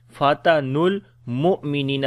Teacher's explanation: Noon we connect directly with the lam. · Again on the hamza we make jerk sound. Ni we long due to yamadda.